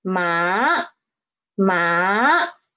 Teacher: change the pitch right when we read it so it is the pitch is rising up rising up from three to five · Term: second tone